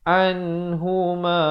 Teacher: Izhar halqi. Nun mati yang ada tanda mati. Sempurnakan bunyi nun. Jangan dipanjangkan.